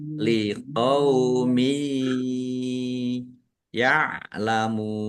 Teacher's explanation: Ditandai yanya ada tasdidnya ditahan biar tampak dengungnya. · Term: mendengung, idgham birunnah